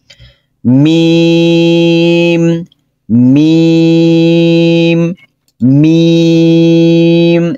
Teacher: মিম ঠোঁটের বাহিরের শুকনো অংশ যুক্ত করে · মিম লম্বা হবে চার আলিফ পরিমাণ